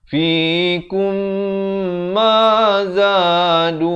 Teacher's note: kum itu idgham mislan saghir, mim mati bertemu mim. Di dalam Al-Quran Dasam Usmani, mimnya itu kosong, tidak diberikan tanda mati, didengungkan 2 harakat.